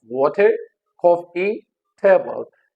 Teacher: and the stress is on the first syllable.